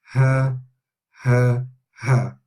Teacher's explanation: The next letter is ha, exactly the same as English, ha, H, ha. The ha comes from the deeper part of the throat actually, so we can feel a vibration in your chest when you're saying this.